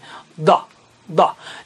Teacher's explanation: जबान का हिस्सा सीधे जानिब का हिस्सा थोड़ा सा टेढ़ा करके ऊपर के दाएं जानिब के मसूड़ों पर लगाना है जहां वो दांत से मिलते हैं